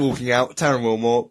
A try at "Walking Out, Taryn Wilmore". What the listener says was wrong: Walking out. You should probably enunciate a tad and leave pauses.